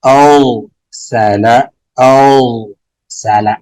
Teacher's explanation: را ساکن ما قبل مفتوح موٹا پڑھیں گے، او سالا، او سالا، ار نہیں کریں گے، ار باریک ہے، او سالا، او سالا، او سالا.